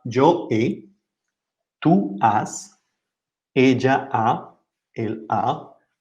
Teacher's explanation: Pay attention to the H because we don't pronounce it. So it sounds like the vowel.